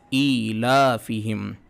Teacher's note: ایلا حمزہ کے نیچے کھڑی زیر ہے، اس کی آواز ہم جس طرح سے زیر کی آواز کو نیچے لے جاتے ہیں، کھڑی زیر کی آواز بھی نیچے جائے گی۔ ایلافہم، کھڑی زیر حمزہ کے نیچے تھی، لام کے اوپر کھڑا زبر ہے، کھڑا زبر برابر ہوتا ہے الف مدہ کے، تو کھڑی زیر اور کھڑا زبر دونوں کی آواز کو ایک الف کے برابر کھینچیں گے۔